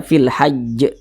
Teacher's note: Jadi kalau kita berhenti di huruf yang tidak dibaca panjang ya, atau berwakaf di huruf yang tidak dibaca panjang, maka huruf tersebut harus kita sukunkan. Kemudian huruf jim ini karena dia disukunkan, ya kita bacanya dipantulkan.